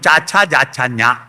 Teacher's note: അണ്ണാക്കിൽ വ്യഞ്ജിപ്പിക്കുന്നത് അണ്ണാക്കിന് താലം എന്നറിയും, താലവ്യം